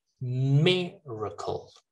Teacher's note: It's schwa. The stress is in the first syllable